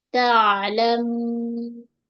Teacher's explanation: pada huruf ain lunak sedikit jangan melantun